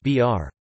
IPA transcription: br